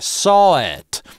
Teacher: Либо пауза saw [pause] it, либо хиатус, т.е. cочетание гласных на стыке saw-it. Никакого [w] там не возникает.